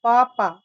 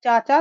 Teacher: तालव्य ध्वनियां वे ध्वनियां जिनका उच्चारण तालु मुंह के ऊपरी भाग के स्पर्श से होता है।